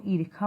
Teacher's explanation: इसमें मूर्धन्य ष के स्थान पर खा बोलने की प्रवृत्ति पाई जाती है